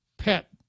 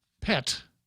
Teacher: final t aspirated and unaspirated